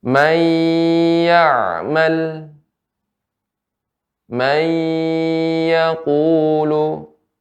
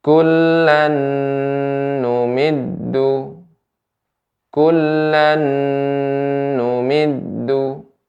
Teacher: Maka apabila nun atau tanwin bertemu dengan salah satu huruf tersebut, ya, misalnya huruf waw atau nun, maka dibaca dengan gunnah, disertai dengan gunnah dengung yang keluar dari pangkal hidung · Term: idgham bi gunnah